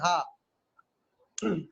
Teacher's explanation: जब हा बोलेंगे तो इसका मतलब है कि साउंड सिर्फ गले से निकला है, कोई चीज किसी से नहीं टकराई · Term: गलोटल